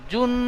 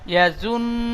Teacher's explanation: ইয়া জাবার, ইয়া জাবার ইয়া, জ নুন পেশ জুন, পেস কুন, জ নুন পেশ জুন, জনুন পেস জুন, জুন হবে না, জুন। আওয়াজটি পুরো নাকে উঠে যাবে, জুন। জনুন পেস জুন, আচ্ছা, আপনার জুন ঠিক এমন ভাবে টান হচ্ছে, টান হবে না। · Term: গুন্না